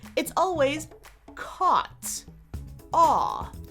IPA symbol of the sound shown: ɔ